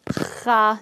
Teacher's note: think of Kha really, really deep down, a deeper sound than the K sound.